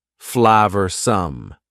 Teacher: Flavorsome means delicious and full of flavor. Notice the pronunciation. 2 schwa sounds there.